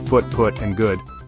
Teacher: a near close back rounded vowel